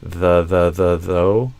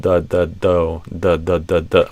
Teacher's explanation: the voiced th often becomes a stopped sound kind of like a d. And that happened here in the word although.